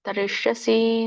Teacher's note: ಶ ಮೂರ್ಧನಿ ಶ ಇದೆ, ತರಿಷ್ಯಸಿ